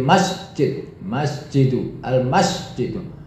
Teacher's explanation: Masnya itu lebih kuat daripada jid. Masjidu, jina tidak begitu jelas.